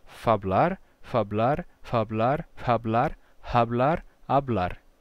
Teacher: em espanhol você vai perder esse f de fabar né ele vai se relaxando até se tornar um aspiração e depois ficar mudo